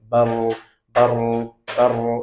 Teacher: untuk getarannya sendiri nggak boleh lebih dari 3 kali. Ya. Bahkan beberapa ulama sejauh yang kami tahu membatasinya kalau bisa cuma sekali getaran. Bar ya. Seperti itu.